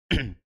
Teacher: huruf qofnya kita pantulkan karena dia Qalqalah